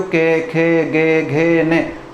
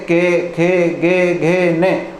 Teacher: वास्तव में ये कहाँ से उच्चारित हो रहे हैं, कंठ से ही उच्चारित हो रहे हैं